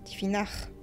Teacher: c'est la partie médiane de la langue qui vibre contrairement au R qu'on trouve en français, qui utilise l'avant de la langue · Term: Le gh